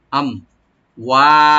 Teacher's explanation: মিম সাকিন এখানে এজাহার করবেন, এখানে কোনো কলকলা বা গুন্না হবে না